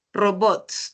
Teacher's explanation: tiene la mayor fuerza de voz en la última pero termina en doble consonante no tildo así termina en ese